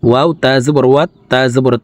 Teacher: তাসদি আছে তোতা হরফ দুইবার উচ্চারণ করে পড়ব